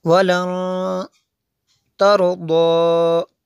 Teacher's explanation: نون ساکن کے بعد تا حروف اخفا میں سے، یہاں پہ اخفا ہوگا